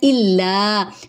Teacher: حمزہ کو لام سے ملائیں گے، تشدید ہے اور اس پہ یہاں پہ ہم تھوڑا سا اسٹے کریں گے · الا لا پہ ایک الف کے برابر لمبا کریں گے کیونکہ الف مدہ